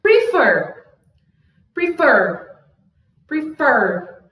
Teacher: Tá vendo que o fer tá bem mais forte do que o pre? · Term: sílaba tônica